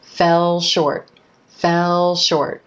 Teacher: I'm holding that dark L sound continuing it right into the SH at the beginning of the word short